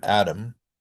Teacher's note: Adam is very usually pronounced with a flap, right? It sounds just like the name Adam that's spelled with a d.